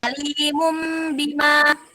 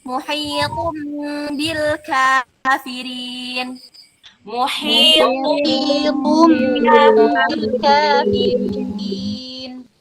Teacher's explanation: bibir atas dan bibir bawah posisinya tertutup dan juga diiringi dengan suara dengung kurang lebih 2 harokat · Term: iklab